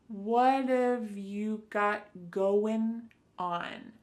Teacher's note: Instead, you're going to hear a reduction or a contraction of the first two words, just like we saw with the previous example, what of. So what and have are going to be pushed together.